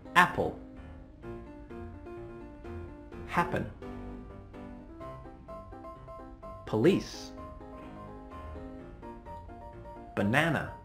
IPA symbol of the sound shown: ə